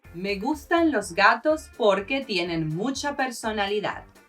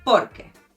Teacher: there's a slight emphasis at the beginning, and you do say it fluidly, as it is one word